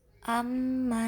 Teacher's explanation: Amma namanya bacaan gunnah musyaddadah karena mim yang bertasydid.